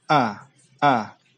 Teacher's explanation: jelas bahwa huruf kedua huruf itu berbeda ya er uh pertama Hamzah itu keluar di tenggorokan bagian bawah